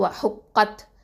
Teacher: ஓகேவா, அடுத்தது காஃப் ஃபத்ஹா த சுகுன் கத், அப்போது வ ஹுக் கத். ஓகே, காஃப் வந்து என்னது, இஸ்திஅலா எழுத்து, அதாவது ஹெவி லெட்டர். அப்போது நம்ம அதை வந்து தஃப்ஹீமாக ஓதணும்.